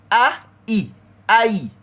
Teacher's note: If you listen to it properly, if you listen to it carefully, [snorts] you go hear I a I most people don't know that the letter I what we say in English when you say I am I am big I am here I am a boy that I is really two sounds come together which is a and e · That I is really two sounds come together, which is A and I. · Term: diphthongs